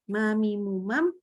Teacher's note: huruf mimnya dia memang harus ada hidung di situ ternyata ya jadi setengah di hidung setengah di bibir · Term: gunnah